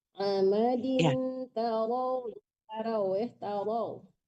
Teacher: Amadin tarau ditebalkan ra-nya ya Bu. Ra fathah itu harus tebal atau tafkhim ya. Amadin tarau ya tarau.